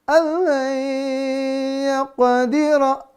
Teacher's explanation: Nun sukun ketemu dengan ya. Durasi dengungnya 2-3 harokat. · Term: Idgham biguna